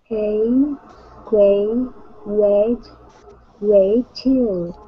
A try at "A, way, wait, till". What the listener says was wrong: Good, good. Nice job.